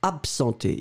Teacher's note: most of the cases, people will pronounce like if it was a P and not a B